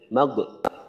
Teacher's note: গয়নে যখন আমরা যজম দিয়ে পড়ি আমরা কিন্তু অনেক সময় কলকলা করে ফেলি